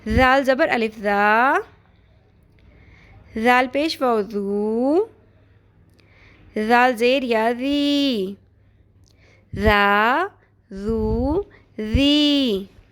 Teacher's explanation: زال زبر الف زا، نرمی سے پڑھنا ہے، ٹھیک ہے؟ یہ زال ہے، زال کو نرمی سے پڑھتے ہیں، اس میں سیٹی کی آواز ہرگز نہیں آنی چاہیے